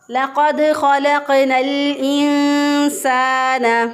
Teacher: یہاں پر ادغام نہیں ہوا کیونکہ آگے الف آ رہا ہے، حمزہ آ رہا ہے